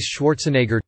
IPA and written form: ˈʃwɔːrtsənˌɛɡər (Schwarzenegger)